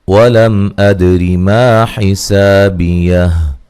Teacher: اچھا جی، وَلَمْ أَدْرِ مَا حِسَابِيَهْ، میم ساکن کا یہاں کیا ہے، اظہار ہے، دال پہ قلقلہ کرنا ہے، دال کو ہلا کے پڑھنا، را کو باریک پڑھنا